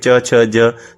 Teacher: च वाले आप बोलके भी देखोगे च छ ज तालू से निकलता है